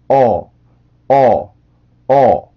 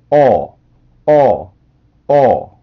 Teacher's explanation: 제가 여러분들을 정면에서 보았을 때 요런 오뚜기 모양이 되면 되는데 이 발음은 입술 모양 때문에 조금 어려워하는데 이 발음은 우리나라에선 오라고 표기를 하는데 이 발음은 오와 어의 중간 정도라고 보시면 돼요. 입술 모양 때문에 그런데요. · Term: 오뚜기 발음